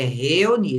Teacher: Reu- esse reu, ele não sai de uma vez só. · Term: hiato